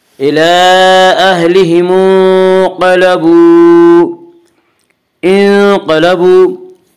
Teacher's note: إِلَىٰ أَهْلِهِمْ انقلبوا، انقلبوا واو مدہ، واو مدہ وہ واو جو ساکن ہو اور اس سے پہلے پیش ہو، واو مدہ کو 1 الف کے برابر کھینچ کر پڑھیں گے